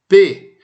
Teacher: quando a gente fala P, a gente fecha os lábios, por isso chama bilabial